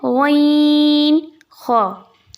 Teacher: ये हलक के सबसे ऊपर वाले हिस्से से अदा होने वाले हरूफ हैं दोनों